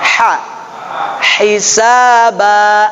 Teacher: ha ini keluarnya dari tengah tenggorokan